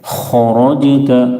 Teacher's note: خا اور را دونوں کو پر پڑھیں گے، موٹا کریں گے